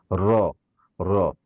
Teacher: র হচ্ছে জিহ্বার আগার উল্টা পিঠ, আপনার উপরের তালুর সাথে ভাইব্রেশন করবেন, একটু কম্পন করবেন, র, র। তারপরে 11 নম্বর মাখরাজ হচ্ছে ত, দাল, তা, জা, সিন, জা, সদ, জা, না, 11 নম্বর মাখরাজ সম্ভবত ত, দাল, তা।